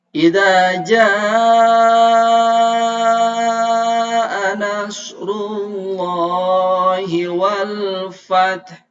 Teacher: hukumnya adalah Mad Thobi'i panjangnya dua harakat bacanya agak panjang